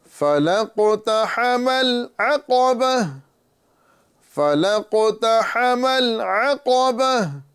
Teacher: عین کو توجہ کے ساتھ ادا کرنا ہے، عین کی جگہ عین کی ہی آواز نکالنا ہے، حمزہ کی آواز نہیں نکالنا ہے